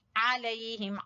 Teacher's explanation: आइन वस्ते हलक से